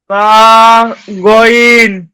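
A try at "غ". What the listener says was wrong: গয়েনটা একটু মোটা হবে।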